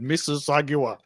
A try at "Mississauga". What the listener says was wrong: The G is somewhat silent. It's just Mississauga. Or maybe the U is silent. just Mississauga.